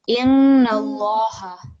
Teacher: this inna also needs to have emphasis and stress, and it needs to be a nasal sound